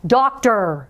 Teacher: You're hearing the R. You don't really hear the O beside of it. It's masking that sound. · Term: controlled r, controlled